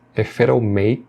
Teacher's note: E aqui você vê que ele vai conectar o som de if com it'll